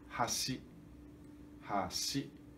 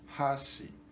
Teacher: para ser ponte, hashi. Hashi. Grave, agudo. Tem que ser grave, agudo. Hashi. Se for contrário, hashi, agudo, grave. Então vai significar pauzinho para comer comida japonesa.